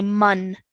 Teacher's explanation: meme to the noon so we're going to say man okay it's going to be a clear sound with no stretched nasal sound